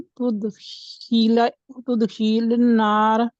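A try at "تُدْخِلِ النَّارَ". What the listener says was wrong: तुदखिलन्नार, लिन्नार नहीं है ना, गौर देखे। अन्नार आप अलहदा अलहदा पढ़ रही हैं तो आप अलहदा अलहदा करेंगे।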